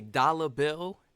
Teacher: We know there's no A at the end, but I'm not saying the R